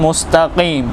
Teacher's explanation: काफ को भी मोटा अदा करना है